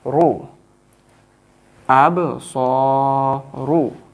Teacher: This ra with dhamma, we will make the ra sound bold.